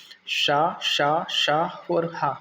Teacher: मुख से गर्म हवा घर्षण के साथ निकलती है। इसलिए इन्हें उष्म व्यंजनों का नाम दिया।